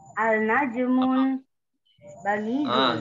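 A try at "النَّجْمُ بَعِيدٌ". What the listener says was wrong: Gak boleh tanwin. An-najmu. Gak boleh tanwin. Sekali lagi.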